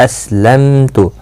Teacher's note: اسلمت، سین ساکن کو ہلانا نہیں۔ میم کے بعد تا آیا ہے، اظہار شفوی ہوگا